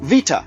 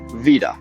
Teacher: Spanish took one step and voiced the T into a D. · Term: lenition